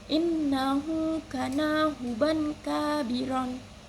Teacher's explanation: cara membacanya itu nun sukun atau tanwin dibaca dengan samar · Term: ikhfa hakiki